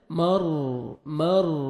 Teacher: را ساکن سے پہلے زبر ہے، آپ نے را کو پر کرنا ہے